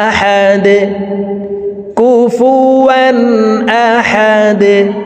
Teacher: দাল যেহেতু কলকলার হরফ নিচের দিকে ধাবিত করে ধাক্কা দিয়ে সাকিন করব।